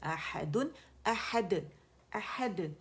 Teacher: دال کیونکہ قلقلہ کا لیٹر ہے تو باریک قلقلہ کریں گے،